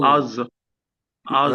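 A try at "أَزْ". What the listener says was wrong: হ্যাঁ, ছেড়ে দিচ্ছেন কেন, নড়াচ্ছেন কেন? নড়বে না তো, এটা সুকুন তো, থামাইতে হবে।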